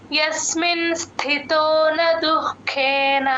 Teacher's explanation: రాసుకోండి ఇక్కడ యూజువల్ గా దు కి మహాప్రాణం పెట్టేస్తూ ఉంటారు అలా కాకుండా దుః గాలి బయటకి వదలాలి దుః కేన ఆ ఖ కి కూడా మహాప్రాణం వినపడేటట్టు చెప్పాలి యస్మిన్ స్థితోన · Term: విసర్గ